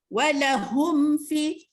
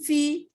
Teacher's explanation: Mim mati bertemu dengan fa tidak dengung. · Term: izhar syafawi